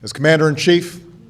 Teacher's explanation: The word as is reduced to z, z, z. It's essentially a reduced vowel to almost nothing with a quick little z.